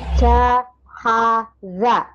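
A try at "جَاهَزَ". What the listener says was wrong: mana ja ha ini kan ada titiknya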